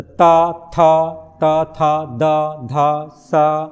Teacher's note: जिन व्यंजनों के उच्चारण में जीवा की नोक ऊपरी दांतों को स्पर्श करती है दंत व्यंजन कहलाती है यानी जीवा का नोक क्या करेगा दांतों